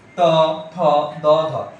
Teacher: এগুলো উচ্চারণের সময় তোমার দাঁতের সাথে জিহ্বা লাগতেছে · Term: দন্ত বর্ণ